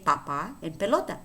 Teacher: in Spanish, we have the P, except we don't have an aspirated P. So we don't say papa, or we don't say pelota, okay? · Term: neutral P